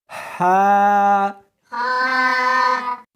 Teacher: اس حرف کو سختی کے ساتھ ادا کریں گے، جیم، اس کو حلق میں سے نکالنا ہے اور ساتھ میں ہوا بھی ہونی چاہیے، ہا، ہاں نہیں پڑھنی بلکہ اس کو حلق میں سے نکالنا ہے، سینے میں سے نہیں نکالنا، ہا، شاباش۔